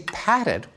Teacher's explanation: when we say patted, we stick in a vowel, patted